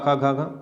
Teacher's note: का वर्ग और हा और विसर्ग का उच्चारण स्थान क्या होता है, कंठ से होता है